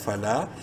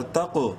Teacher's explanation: قاف کو بولڈ بھی کرنا ہے اور قلقلہ بھی کرنا ہے ، بولڈ لیٹرز میں سے بھی ہے اور حروف قلقلہ میں